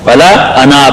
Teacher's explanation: اگر وقف کریں تو ولا انا پھر الف پڑھا جائے گا